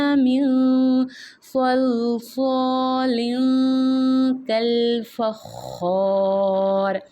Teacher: اب یہ دیکھیں تنوین جو ہے نا، تنوین کے تنوین کے بعد بھی اگر حروف حلقی کے علاوہ کوئی حرف آتا ہے تو پھر ہم نے تنوین کی جو نون ساکن کی آواز آئے گی تنوین کی، اس کو بھی ہم نے ناک میں چھپا کے پڑھنا ہوتا ہے. جو تنوین ہے اس کو ہم جب پڑھتے ہیں تو اس کے آخر میں نون کی آواز آتی ہے، نون ساکن کی.